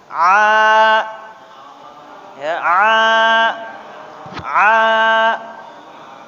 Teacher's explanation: dari sini nanti kalau bapak mengucapkan huruf Ain kalau sudah dipegangnya terasa ah bergetar di sini nih di tengah-tengah tenggorokan